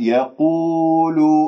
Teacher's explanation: القاف من كلمة يقول مفخمة مرتبة ثالثة لأنها مضمومة